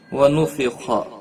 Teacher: خا حروف مستعلیہ میں سے ہے، پر پڑا جائے گا۔